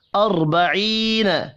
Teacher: سین کے اوپر چھوٹی مد ہے، 3 الف کے برابر کھینچ کر پڑھنا ہے. اربعین، را ساکن سے پچھلے حرف کے اوپر زبر ہے، را کو پر پڑھیں گے. یا مدہ کو ایک الف کے برابر کھینچ کر پڑھنا ہے.